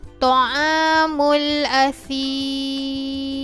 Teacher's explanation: saya bacakan dengan kadar 4 harokat sebelum saya matikan huruf Mim